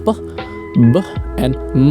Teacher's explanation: bilabial which means both lips pressed together creating sounds such as P, B and M